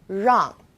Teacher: it's quite similar to the r sound in run but the r is a little softer so try moving your tongue more to the back of your mouth